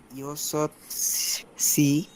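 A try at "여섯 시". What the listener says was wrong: না সি না, শি, ইয়সৎ শি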